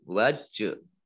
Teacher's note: Wajhahu jim sukun ini termasuk huruf qalqalah dibaca memantul